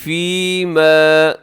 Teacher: اس کو لمبا کرنا ہے کیونکہ یا سے پہلے زیر یا مدہ ہے